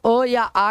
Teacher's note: अगर अ पूछे चाहे आ पूछे दोनों का उच्चारण स्थान कहां होगा कंठ होगा